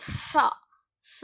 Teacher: ரெண்டு பல்லுக்கு நடுவுல நாக்க வச்சு நம்ம என்ன செய்யணும் அப்படின்னா அந்த மேல் புறத்துல வந்து மேல் பல்லுல வந்து அந்த சா அப்படின்னு சொல்லும் பொழுது அந்த நாக்கு படுத மாதிரி நம்ம வந்து சொல்லுவோம்.